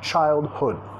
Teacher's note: Childhood, acentuación de la palabra, primera sílaba acentuada, segunda, sonido vocálico más reducida